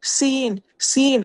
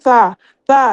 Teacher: جو سین ہے وہ کیا ہوتا ہے، اس میں سیٹی کی آواز آتی ہے اور سا میں سیٹی کی آواز نہیں آتی